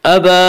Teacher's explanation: الا ابلیس ابا، با کے اوپر کھڑا زبر ہے، کھڑا زبر کو ایک الف کے برابر کھینچ کر پڑھیں گے